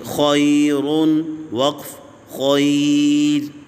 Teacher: اس را کو باریک کریں گے کیونکہ اس سے پہلے یا ساکنہ ہے۔ را ساکن سے پہلے یعنی جب وقف را پہ کرنا ہو اس سے پہلے دیکھتے ہیں اگر یا ساکنہ ہو تو را جو ہے وقف میں پھر باریک ہی پڑی جاتی ہے، چاہے پہلے والے حرف کے اوپر زبر یا پیش ہو یا نہ ہو۔